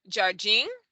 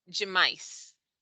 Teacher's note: in portuguese in many words you'll see that the d i and the d e are pronounced as if the d is actually a j